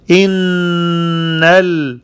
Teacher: In, the noon has shadda. It's ghunna, 2 harakat, 2 seconds.